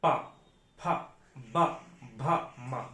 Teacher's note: ओष्ठ व्यंजन हम दोनों ओंठे बंद करके बोलते हैं। अगर ओष्ठ व्यंजन कोई है और उसे बोलेंगे तो दोनों ओंठे आप आपस में सटेंगे जरूर।